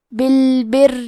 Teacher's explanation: کلمت بالبر میں حرف را کو 2 حرف کے برابر پڑھیں گے کیونکہ تشدید زیر کا ہے تو یہاں را کا حکم ہے ترقیق تو ہم حرف را کو پتلی آواز میں پڑھیں گے